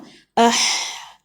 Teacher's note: آپ کی آواز گلے کے درمیانی حصے پر رک جاتی ہے، یہی ح کا مخرج ہے